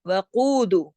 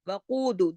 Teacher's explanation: وقود، قاف موٹا 2 حرکات